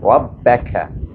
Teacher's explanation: Kaf ini dia hamas ya. Bunyinya berangin